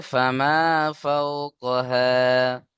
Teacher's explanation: ফামা, ফা জবর ফা, মিম আলিফ জবর মা, ফামা ফাওকাহা, ফা ওয়াও জবর ফাও, ও সাকিন ডান দিকে জবর ও লিন, নরম আওয়াজে তাড়াতাড়ি পড়তে হবে।